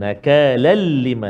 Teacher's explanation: Tanwin bertemu dengan lam, dia jadi idgham ma'al gunnah ke bila gunnah? Bila gunnah, tanpa dengung, tak boleh dengung kat situ kan.